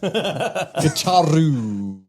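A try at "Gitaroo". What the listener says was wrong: You didn't say guitar oo. You say guitar O or Gitaro. Yeah, Gitaro, you too.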